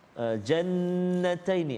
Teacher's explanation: ada wajib al-ghunnah, dengung dua harakat